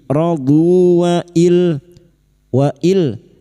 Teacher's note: nun sukun bertemu lam idgham bila guna, masuk tanpa mendengung, masuk pada huruf lam tanpa mendengung